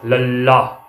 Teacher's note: ਜੀਭ ਇਕੱਠੀ ਹੋ ਜਾਂਦੀ ਆ, ਪਾਸਿਆਂ ਥਾਣੀ ਆਵਾਜ਼ ਨਿਕਲ ਆਉਂਦੀ ਆ। ਇਹਨਾਂ ਧੁਨੀਆਂ ਦੇ ਉਚਾਰਨ ਸਮੇਂ ਜੀਭ ਦੀ ਨੋਕ ਦੰਦ ਪਠਾਰ ਨਾਲ ਸਪਰਸ਼ ਕਰਕੇ ਹਵਾ ਨੂੰ ਰੋਕਦੀ ਹੈ, ਪਰ ਸਾਹ ਦੀ ਹਵਾ ਜੀਭ ਦੇ ਦੋਹਾਂ ਪਾਸਿਆਂ ਵਾਲੇ ਖੱਪੇ ਹੁੰਦੇ ਖਾਲੀ ਥਾਂ ਵਿੱਚੋਂ ਬਾਹਰ ਨਿਕਲ ਜਾਂਦੀ ਹੈ। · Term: ਪਾਸੇਦਾਰ ਵਿਅੰਜਨ